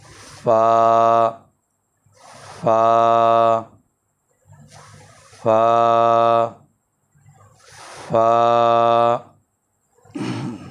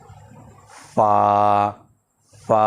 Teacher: اس کی ادائیگی جو ہے سامنے کے اوپر والے 2 دانت جو درمیانی ہیں، یہ 2 درمیانی دانت یہ جو ہے ان کا جو کنارہ ہے ان نچلے والے ہونٹ کی تری والے حصہ کو لگے۔ اوپر والے 2 دانتوں کا کنارہ نچلے ہونٹوں کی تری والی جگہ پر لگے۔